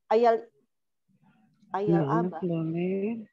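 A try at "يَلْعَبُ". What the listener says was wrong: Yal'ab, bukan yal'ib. Yal'ab.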